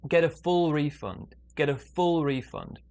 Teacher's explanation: small stress on get big stress on full